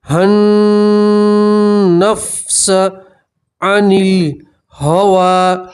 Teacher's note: ہا کو سیدھا نون سے ملائیں گے اور نون میں گننا کریں گے۔